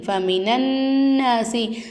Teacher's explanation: சத்து செய்யப்பட்ட நூனையும் சத்து செய்யப்பட்ட மீமையும் நல்லா அழுத்தி உச்சரிக்கணும்.